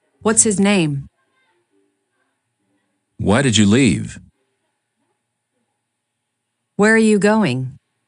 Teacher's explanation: Use falling intonation with wh questions.